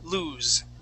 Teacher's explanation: He would lose his pants with a Z or the voiced S, lose.